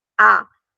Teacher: o A sai sem fazer vibração nenhuma aqui nas vias nasais